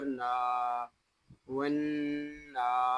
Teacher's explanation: نون کو ہم ایک الف تک کھینچ کر بھی پڑھیں گے کیونکہ نون کے اوپر کھڑا زبر آ گیا ہے